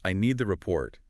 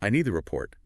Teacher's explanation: Think about the difference between saying, "I need the report," with the final T sounds very soft or dropped, versus saying, "I need the report," with a clear, crisp final T. The second is much easier to understand, especially if the connection isn't perfect.